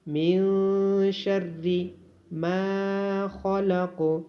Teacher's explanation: قل اعوذ برب الفلق من شر ما خلق. نون ساکن پہ اخفا کیا جائے گا، نون ساکن کی آواز کو ناک میں چھپایا جائے گا · خا کو موٹا پڑھا جائے گا، قوف کو موٹا بھی پڑھا جائے گا اور قوف پہ قلقلہ بھی کیا جائے گا